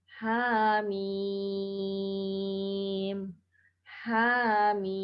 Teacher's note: ha dibaca 2 harokat tanpa imbuhan hamzah. Kemudian mim dibaca 6 harokat.